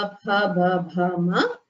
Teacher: Pavarga, pa, bha, bha, bha, ma. These only the lips come in contact with each other. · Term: oshtya varnas